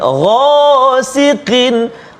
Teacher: yang tebalnya ni ghain, lepas tu ada alif dengan dia, ghasiqin, tafkhim betul tebal kan.